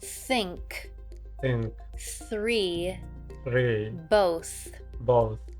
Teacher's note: What we're looking for is a relaxed position and a smooth flow of air. This th sound is also voiceless. That means you don't vibrate your vocal cords to make this sound.